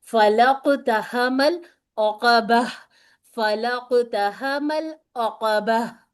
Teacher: یاد رکھنے کی بات یہ ہے کہ تائے مربوطہ کو ہائے ساکنہ میں بدل دیتے ہیں